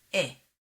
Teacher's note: In modern Hebrew, segol and tzere are pronounced the same, e.